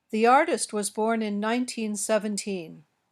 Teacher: the stress in teen numbers like 14 is usually on the last syllable